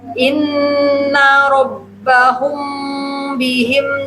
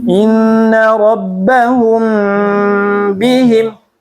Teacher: Tahan mim bertemu ba. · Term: Ifa syafawi